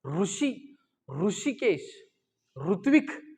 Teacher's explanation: मूर्धन्य स्वर कोणता आहे, जिथं ट म्हणताना जीभ लागते तिथंच रू म्हणताना जीभ लागते